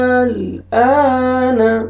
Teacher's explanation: تو یہ مد جو ہے نا مد لازم کلمی مخفف ہوئے گا, آپ نے 5 سے 6 الف کی مقدار میں کھینچنا ہے